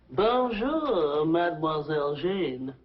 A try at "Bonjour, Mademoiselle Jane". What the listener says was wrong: That's very good. Except for the mwah. Must be soft. Mwah. Watch my lips closely. Mwah.